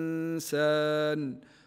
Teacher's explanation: النون في المصحف كما تلاحظون لا تحمل فوقها سكون وبعدها حرف السين حكمها الاخفاء مع الغنه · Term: الإخفاء مع الغنة